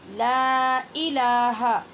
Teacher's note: پہلے لا اور دوسرے لا دونوں کو برابر لمبا کرنا ہے، درمیان میں حمزہ تحقیق سے ادا کرنی ہے.